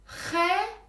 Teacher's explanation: yani İngilizce'de gördüğünüz x harfi bizde h harfi ile eş değer H daha boğazdan daha Tok söyleniyor